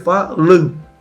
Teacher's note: Então nós vamos ter som de A-O, vai ser ditongo.